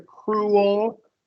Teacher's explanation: You kind of added a little schwa before the L.